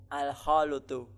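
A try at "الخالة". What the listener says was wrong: Al-khalatu. Ya, bukan al-khalutu. Nah, lamnya di fathah, al-khalatu.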